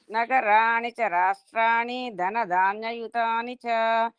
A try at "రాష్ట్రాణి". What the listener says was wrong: రాష్ట్రాణిలోని దీర్ఘం లేదు రాష్ట్రాణి అని అట్లా చెప్పాలి హ్రస్వం అంటారు దాన్ని దీర్ఘం లేకుండా ఉంటే హ్రస్వం అంటారు